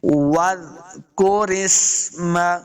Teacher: کو زال کے ساتھ ملا کے پڑھنا ہے، زال ساکن ہے، واو کو جب پڑھیں گے تو اپنے ہونٹ دونوں جو ہیں وہ گول کریں گے تب واو کا مخرج صحیح ادا ہوگا، زال کو نرمی کے